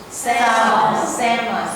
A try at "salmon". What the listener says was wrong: Right. No L. Get rid of that L. Salmon.